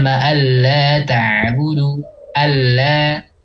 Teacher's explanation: Ya, jadi yang nun pertama nih atau huruf yang pertama ini, ya, baik itu nun atau tanwin itu tidak dianggap, langsung aja masuk ke huruf berikutnya. Ya, suaranya itu langsung huruf berikutnya. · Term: idgham bila gunnah